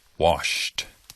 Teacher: sound in your mouth not with your vocal cords wash therefore the past tense ending sounds like a t